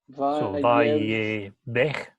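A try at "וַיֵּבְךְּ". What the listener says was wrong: Yev. That's just a hard K on the end of the word. So it'd be transliterated as V-A-Y-Y-E-B-K, but the B is underlined. Vayevk.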